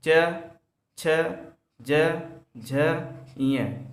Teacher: जब बोलेंगे हम तो हमारा जीभ तालु पर टकराता है। च, छ, ज, झ, ञ, इसलिए इसे तालु, इनका उच्चार स्थान तालु है।